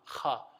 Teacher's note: Kha is part of the throat but closest to the mouth, right? So it's like on that border of your throat and the mouth, kha.